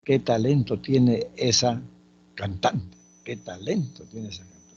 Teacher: Eso es una oración que tiene una entonación descendente. Esa es exclamativa.